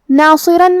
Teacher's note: کلمت ناصرن میں یہاں حرف الصاد ہے اور صاد حروف تفخیم میں سے ہے تو ہم یہ حرف کو موٹی آواز میں پڑھیں گے. پھر حرف الراء پہ تنوین زبر ہے اور اس کے بعد حرف الواو آتا ہے.